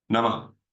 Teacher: And remember, no, it's not Namaha. It's not Ha at the end. It's an exhale, which becomes a Ha.